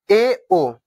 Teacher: अर्ध समृद्ध। इसमें यानी जो मुंह है वो आधा से कम मतलब खुला रहता है